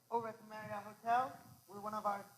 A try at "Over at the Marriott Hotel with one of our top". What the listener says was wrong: Okay, here's the problem. He's up. He sounds like he's a songbird almost, right? Okay? The problem is you need to start your tonality lower. You need to give yourself room to manage. Remember, you're managing tonality within a range. Learn your range.